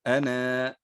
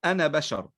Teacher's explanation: كذلك كلمة أنا بشر عند الوقف عليها تثبت الألف، وعند الوصل تحذف الألف. فمثلا نقول عند الوقف عليها نقول أنا، هذا وقفا. · أما وصلا نقول أنا بشر، ننطق فقط بنون مفتوحة عند الوصل